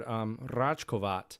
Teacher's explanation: it has the rolled R in the word